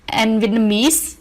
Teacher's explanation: And Vietnamese is stressed on the last syllable.